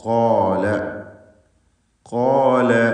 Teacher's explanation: സ്വരഭാരത്തോടെ ഉച്ചരിക്കുക. ഖാഫിനും അതിൻ്റെ ദീർഘാക്ഷരമായ അലിഫിനും തഫ്ഖീം ഉണ്ടായിരിക്കുന്നതാണ്.